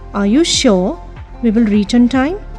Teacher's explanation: Here the rising intonation is on sure. Rest is in falling intonation. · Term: falling rising tone